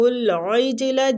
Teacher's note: جیم کلکلا حروف ہے، اس پہ خوب کلکلا کریں گے، آواز پلٹ کے آئے گی جیم کی